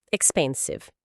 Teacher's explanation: O X aqui volta a soar como KS expensive e o cve no final tem um som de s e depois com o V bem pronunciado.